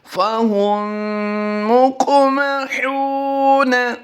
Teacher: قاف کی ادائیگی پر کرنی ہے اور قاف پر ہم نے قلقلہ بھی کرنا ہے، یہ قلقلہ صغریٰ کہلاتا ہے۔